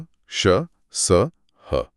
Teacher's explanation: इनके उच्चारण में हवा मुंह में घर्षण के साथ निकलती है, जिससे एक गर्मी सी पैदा होती है। आप श बोलकर महसूस कर सकती हैं। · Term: ऊष्म